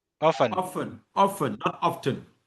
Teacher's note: You don't pronounce the T. Often.